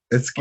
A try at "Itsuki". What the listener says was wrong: So in that name, the U isn't pronounced. It's a Japanese name, but it's Itsuki.